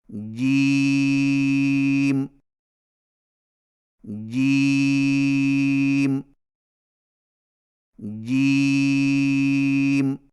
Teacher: جیم کی ادائیگی میں زبان کے درمیان کو تالو کے ساتھ سختی سے لگا کر باریک آواز میں پڑھیں